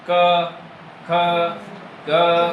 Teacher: क से लेकर अंग तक का उच्चारण हमने किया तो हमारे कंठ के वहां स्पर्श हुआ हवा का क ख ग अगर आप कंठ को छू के देखोगे तो